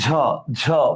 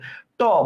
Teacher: তাহলে দেখেন চ জ ঝ এই যে ঝ ঝ বাতাস বেরচ্ছে ট বাতাস বেরচ্ছে না প বাতাস বেরচ্ছে না তার মানে এই যে ঝ এটাতে বাতাস বেরচ্ছে তার মানে এটা হচ্ছে মহাপ্রাণ ধ্বনি